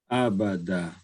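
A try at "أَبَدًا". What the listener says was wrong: Your last letter there, the dal, somehow seems a little bit too strong. Again, so the dal is, again, like the ta, is pretty light, right? So don't say abada, say abada. Da. Abada.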